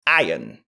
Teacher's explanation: Non, on dira plutôt iron sans le R.